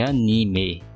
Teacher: A pronúncia mais comum no Brasil é anime, com o E com o som mais fechado. Já em português de Portugal é anime, a ênfase no I.